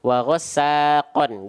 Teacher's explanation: Ya, huruf qaf di sini dia berharokat baris atas 2. Harusnya dibaca dengan vokal an. Karena qaf tebal jadinya kon